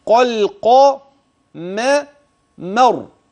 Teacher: راء كلمه القمر اذا وقفت فهي مفخمه · الميم ترقق التي وقعت بين القاف والراء التي سكنت لاجل الوقف